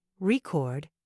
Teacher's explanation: if you stress the second syllable record it's a verb meaning to make a recording